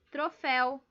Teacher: A última mais forte é o fel. Então, termina em el, eu acentuei.